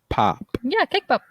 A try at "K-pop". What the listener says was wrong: You're saying cake pop. It's not cake pop. K. Pop. It's not.